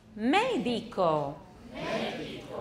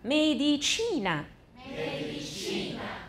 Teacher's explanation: 重音在前面，可是医学重音是在倒数第二个